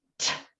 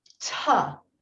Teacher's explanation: the final sound in the word boat is T. It is not ta, because ta is actually 2 sounds.